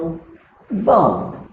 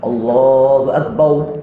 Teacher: Jangan ditukar huruf ra pada waw pada lafaz akbar.